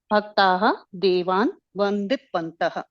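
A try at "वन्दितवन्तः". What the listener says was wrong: Vanditavantaha. yeah, my request is, I have reminded you earlier also, you're getting influenced by the Hindi pronunciation in Sanskritam, and that will create problems because a halanta, say like for example, if it is avandant, if you say, then you are converting it to parasmai form.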